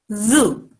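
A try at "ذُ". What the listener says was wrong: Don't take it longer. Just very short sound, but zoo.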